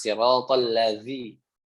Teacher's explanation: Kemudian siratal ladzina, di sini ingat huruf zal tadi sudah saya jelaskan makrojnya ujung lidah bertemu ujung gigi di atas